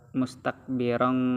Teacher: tanwin disambut oleh huruf Kaf yang mana cara bacanya adalah dengung dikarenakan hukumnya adalah ikhfa karena huruf k Itu adalah huruf ikhfa